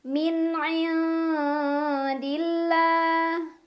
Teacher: Karena ada alif lam yang bertemu dengan huruf syamsiyah yaitu lam. Cara bacanya alif lam tidak dibaca atau diidghamkan ya, dimasukkan. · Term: alif lam syamsiyah